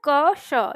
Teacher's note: इसकी ध्वनि है क श, यानी इससे आधा क और मूर्धा श ये होता है